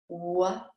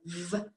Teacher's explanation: I started with the mouth placement and working with the mouth map and the physicality of the two sounds. So the difference between w, which is a rounded mouth, comparing it to the v, which has the teeth on the bottom lip